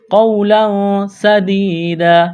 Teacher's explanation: وقف کریں گے، دو زبر کی تنوین کو الف سے تبدیل کرنا ہے · تنوین کے بعد سین ہے، یہاں پر اخفا کریں گے